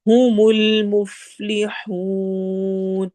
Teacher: ح حروف حلقی میں سے ہے، واو مدہ اور مد عارض للسکون ہے